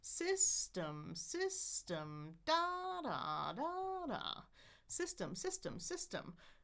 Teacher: I take the vowel in there and I make it three things. Longer, louder, and higher in pitch. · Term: stress syllable